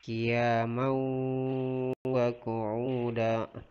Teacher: Karena fathatain bertemu dengan huruf waw. Jadi cara membacanya dengan berdengun. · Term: idgham bigunnah